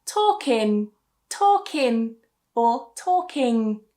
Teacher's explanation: Some speakers also just cut the ng altogether and pronounce it more like a n sound.